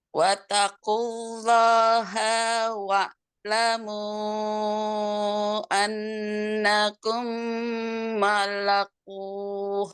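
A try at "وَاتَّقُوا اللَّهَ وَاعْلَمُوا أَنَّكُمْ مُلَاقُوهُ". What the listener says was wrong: Yang jelas ini bukan ma ya. Ini mu.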